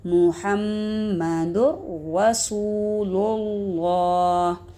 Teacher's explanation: محمد میم مشدد کا غنہ کریں گے